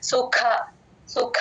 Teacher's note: సుఖ లో మహాప్రాణం ఖ కి మహాప్రాణం ఉంది